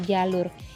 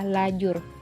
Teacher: kata jalur yang diubah urutan bunyinya menjadi kata lajur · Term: metatesis